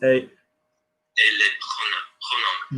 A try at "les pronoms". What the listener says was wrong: Well done.